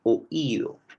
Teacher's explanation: Tienes la vocal abierta en principio y luego tienes la vocal cerrada tónica.